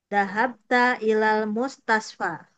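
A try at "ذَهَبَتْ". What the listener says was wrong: Maknanya sukun. Zahabat.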